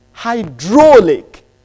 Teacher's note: the lexical stress is on the second syllable